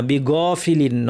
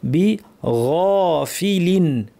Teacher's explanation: বিগাইনের আওয়াজটা সফট হবে, বাতাস বন্ধ, গয়ের মতো শক্ত হবে না, বিগাফিলিন নয়, বিগাফিলিন।